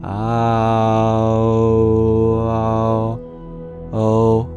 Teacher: Oh is just halfway between ah and oo.